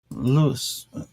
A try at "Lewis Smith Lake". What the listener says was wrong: Like, but it's Lewis, not Lous. Lewis Smith Lake.